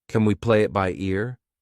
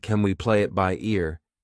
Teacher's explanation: We pronounce it as kin, unstressed